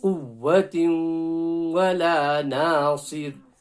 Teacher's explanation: Idgham. So it's an idgham with a gunna. So it's a merge with a gunna.